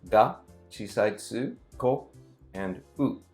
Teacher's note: It's actually 4 moras. Even though it is 2 syllables, gakko, but it's 4 moras because it is ga, chisai tsu, ko, and u.